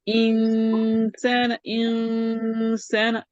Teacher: اور انسان کا جو نون ساکن کا غنہ ہے وہ مرقق ہے. انسان، انسان، ایسے مفخم نہیں کرنا، مرقق.